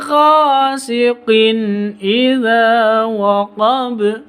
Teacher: Gha ini panjang 2 ketuk. Qin idza tanwin bertemu dengan hamzah, berarti izhar halqi, jelas bacanya.